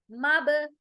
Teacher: बा पर खलखला हो रहा है। मब आवाज को हम जर्किंग साउंड के साथ एको करेंगे।